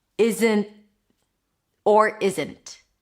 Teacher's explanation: a held T after an N, which is basically you're releasing air through the nose. The tip of the tongue is touching the upper pallet and then you're blocking it abruptly. · It's an N sound and then you stop it abruptly. I want to say with a T, but it's not really a T.